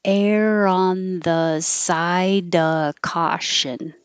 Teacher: we don't have to say of with a v you can get rid of the v and just say uh side air on the side oh error